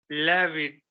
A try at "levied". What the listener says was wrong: Levied. Do not run away from the sound. It's completely fine to say V. Levied.